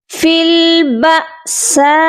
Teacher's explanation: اس مد کو ہم پہلے لمبا کریں گے، یہ مد متصل ہے، اس کو ہم 3 سے 4 الف کے مقدار لمبا کریں گے